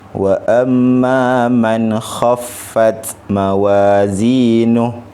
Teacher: nun mati bertemu dengan huruf kha, tidak ada dengung, sebutannya adalah jelas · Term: izhar halqi